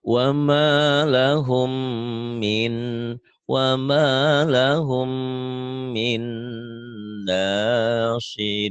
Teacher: Wa ma lahum itu hukum mim mati idgham mimi. Min itu idgham bigunah nun mati ketemu nun